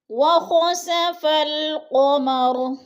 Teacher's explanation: قاف کو موٹا کرنا ہے اور را وقف کی صورت میں ساکن پڑھا جائے گا